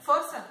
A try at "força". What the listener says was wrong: É com R mais R, né? Dá pra carioca aí, tem que ser força.